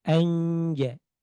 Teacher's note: Jadi nun sukun ditekan di tempatnya huruf jim.